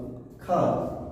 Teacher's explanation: स्वर तंत्रियों में कोई कंपन नहीं होगा, वो अघोष कह रहा है इसका।